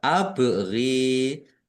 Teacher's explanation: Lam fathah berdiri mat tobi'i, panjang 2 harokat. Abri, bak sukun bacaan kolkolah, dibaca memantul, ditampakkan pantulannya